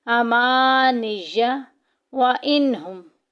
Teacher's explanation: नून साकिन के बाद हा आ गया हरूफ हल्की में से, लिहाजा ज़ाहिर करके पढ़ेंगे। हमने रूल्स क्या पढ़े थे कि जब भी नून साकिन या तनवीन के बाद हरूफ हल्की में से कोई भी हर्फ आ जाएगा वहाँ इजहार होगा, ज़ाहिर करके पढ़ेंगे।